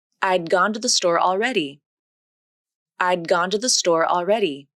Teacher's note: The tongue tip comes up, the voicing continues, and the airflow is stopped. Then the tongue moves back for the G consonant. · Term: unreleased D consonant